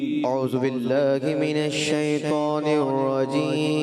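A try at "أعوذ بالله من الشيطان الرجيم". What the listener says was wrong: دوبارہ ایک دال کی ادائیگی اور کلیئر کریں.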